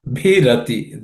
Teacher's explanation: Bhirati, the B is aspirated.